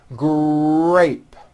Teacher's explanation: the r sound is stronger and you even hear it more than the g sound